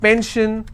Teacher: If I have pension, I will stress on pen. So basically wherever I have this particular word ending, I will stress on the previous syllable.